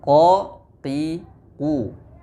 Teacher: pada proses pengucapan huruf Qaf tidak ada aliran angin atau aliran udara yang deras. Karena pada proses pengucapan huruf Qaf, pangkal lidah kita terangkat dan menempel. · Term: jahr